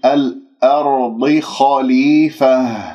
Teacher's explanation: أن لا ننطق الهمزة مفخمة، نقول الهمزة مرققة لأنها جاورت الراء الساكنة قبلها مفتوح مفخمة والضاد المفخمة مرتبة أخيرة مكسورة، فانتبهوا ما نقول الأرض، لا الأرض خليفة.